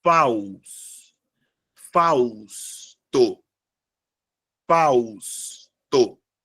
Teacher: Fausto é formado por 3 sílabas e a sílaba tônica é a primeira, sendo uma palavra paroxítona